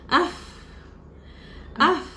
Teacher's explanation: Huruf fa sebutan dia gigi atas, tekan perut bibir bawah, dalam.